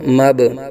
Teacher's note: با ساکن میں قلقلہ ہوگا